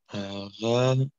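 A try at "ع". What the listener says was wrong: Bei dir kommt das noch wie ein Rein raus. Es muss A sein. Also A, ein bisschen dicker. A.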